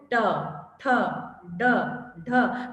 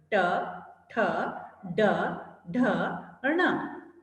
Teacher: बिल्कुल सबसे ऊंचा तालु है ना, वहां आपकी जीभ टकरा रही है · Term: मूर्धा